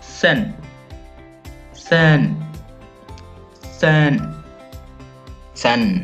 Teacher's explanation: First tone we use flat because when we try it then it will go straight.